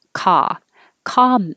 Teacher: the vowel is ah so open the jaw